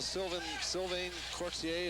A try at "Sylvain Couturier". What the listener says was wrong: Sylvain Couturier, yeah. Sylvain Couturier. It's the R. We pronounce the R more than you guys.